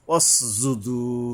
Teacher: অস যুদু, এই যে সিন উচ্চারণে সাবধান হতে হবে। জিম, এই যে জিব্বার মাঝখান থেকে তালুর সাথে শক্তভাবে বা মোটা করে আদায় করতে হবে